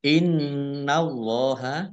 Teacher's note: Nun tasdid dibaca ghunah atau mendengung ditahan dua harakat Allahnya dibaca tebal karena harakat di depannya fathah lam fathah berdiri · baik Innallaha Nun tasdid dibaca ghunah atau mendengung ditahan dua harakat Allahnya dibaca tebal karena harakat di depannya fathah